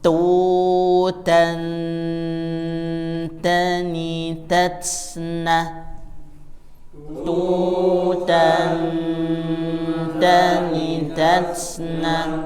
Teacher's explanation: karena berdekatan nun dan ta secara makhraj, maka dia cenderung bunyinya n, bukan ng. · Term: ikhfa